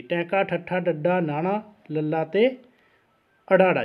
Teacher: ਉਲਟ ਜੀਭੀ ਜਾਂ ਮੂਰਧਨੀ, ਜੀਭ ਦਾ ਮੂਹਰਲਾ ਭਾਗ ਉਲਟਾ ਹੋ ਕੇ ਜਿਹੜਾ ਹੈ ਕਠੋਰ ਤਾਲੂ ਨੂੰ ਛੂੰਹਦਾ ਜੀ।